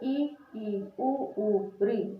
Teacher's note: ई उ री, तो क्या मुंह पूरा खुल रहा है, लगभग बंद ही है